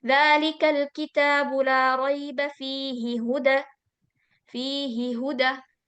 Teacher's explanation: Kalau fihi h-nya enggak panjang karena ya sukun